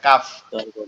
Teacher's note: কফ হচ্ছে জিহ্বার গোড়া থেকে একটু আগে বাড়ায়া তারপর আবার উপরে তালুর সঙ্গে লাগায়া